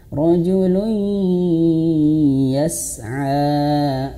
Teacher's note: Kalau dia hukumnya seperti ini ya, idgham bi gunnah, maka wajib masuk hidung ya.